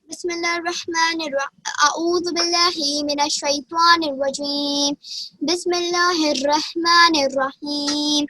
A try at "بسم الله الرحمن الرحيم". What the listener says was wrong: را کو موٹا پڑھیں. بسم اللہ الرحمن الرحیم.